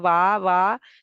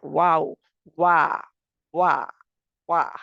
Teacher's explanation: वाव में क्या है कि होंठ गोल होते हैं, होंठों की गोलाई जो होती है यही इसका मखरज है। होंठों की गोलाई ही इसका मखरज होता है।